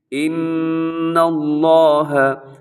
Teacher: نون مشدد ہے، غنہ کرنا ہے